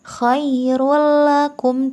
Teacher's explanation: cara membacanya dengan memasukkan tanwin ke dalam huruf lam tanpa dengung khoirullakum tidak boleh dengung tidak ditahan tidak Choirul lah tetapi Choirul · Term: idgham bilagunnah